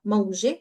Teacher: mawji ends with the round ta, mawji, which is the soft eh sound in Lebanese.